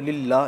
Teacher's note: लफ्ज़ अल्लाह के पहले ज़ेर आ गई तो इसको हम लाम को बारीक पढ़ेंगे